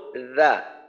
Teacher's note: রালের মাখরাজ জিব্বার আগা সামনের উপরের দুই দাঁতের আগার সঙ্গে লাগাইয়া